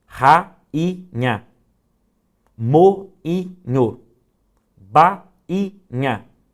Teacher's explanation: O I está sozinho na sílaba, ele teria acento, mas esse acento não existe em razão do NH, que nasaliza o som desse I, o que impede que ele receba acento agudo.